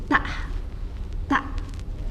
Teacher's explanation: Sifat huruf ta harus syiddah juga, suaranya harus tertahan, kemudian lidah harus turun, gak boleh ke atas, mulut juga terbuka · Ismat artinya hati-hati membacanya, dan hamas, ada suara mendesis